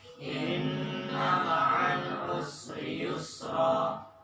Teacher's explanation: Ma'al jangan. Ingat, lam itu bainiyah, tawassut, ada pantulannya dikit